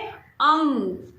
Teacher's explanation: जब हम इसका प्रयोग करते हैं तो हम जो हमारी आवाज़ है वो हमारे गले और हमारी नाक से आती है। इसीलिए अंग की मात्रा को अनुस्वार की मात्रा भी बोला जाता है।